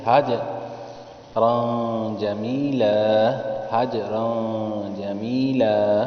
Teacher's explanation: حج کلکلہ میں آواز تھوڑی سی پیچھے کی طرف لوٹتی ہے